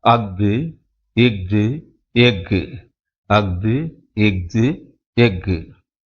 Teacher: ஆயுத எழுத்து தன்னுடைய மாத்திரை அளவான அரை மாத்திரையில் முழுமையாக ஒலிப்பதை பார்க்கலாம்